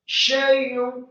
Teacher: Syaitani, kemudian fathah 2 harokat karena harokatnya tegak atau harokatnya miring namun setelahnya ada alif. Huruf ta-nya dibaca mat 2 harokat, kemudian nunnya dibaca tipis kasrah 1 harokat